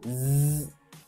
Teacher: it's a voiced sound, and in that sense we have to make our throat vibrate. So when we do z, it vibrates.